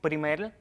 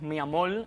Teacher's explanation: a veces cambiamos una r por una l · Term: lambdacismo